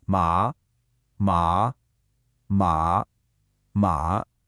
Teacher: 4 totally different words, and the only difference was the tone.